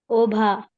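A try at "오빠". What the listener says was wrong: it is oppa. So when you write bha twice, it's a little bit stronger, right? So you pronounce it as pa, oppa, oppa, pa sound.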